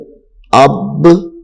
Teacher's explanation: یہ بھی حروف قلقلہ میں سے ہے، با، تو اس کو بھی خوب ظاہر کر کے پڑھنا ہے